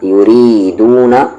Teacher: را لائٹ ہوگا کیونکہ اس پہ زیر ہے